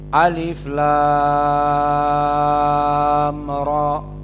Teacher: Kenapa lamnya panjang mad lazim [Musik] dan roknya hanya 2 harokat karena dia terdiri dari ro